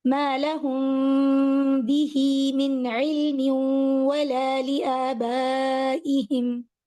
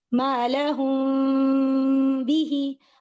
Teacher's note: میں میم کے لیے مکمل ہونٹوں کو جوڑ نہیں رہی. پھر بھی آپ کو ہلکی سی آواز تو آئے گی کہ کوئی میم اور با دونوں ہی ہونٹوں سے آتے ہیں، لیکن سٹل جتنا آپ کوشش کر سکتے ہیں اتنا اس کو چھپائیں. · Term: اخفا